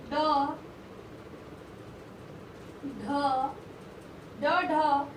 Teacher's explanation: उत्क्षिप्त व्यंजन, इसके अंतर्गत व्यंजनों के ड ढ व्यंजन का उच्चारण व्यंजन का उच्चारण जीभ की नोक को उलटकर कठोर तालु को झटके के साथ कुछ दूर तक छूकर किया जाता है, इसलिए इन्हें उत्क्षिप्त व्यंजन कहते हैं।